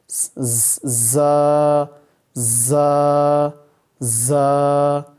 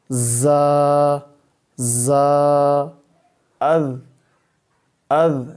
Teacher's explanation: اس کو سیٹی دیں گے، سیٹی کی آواز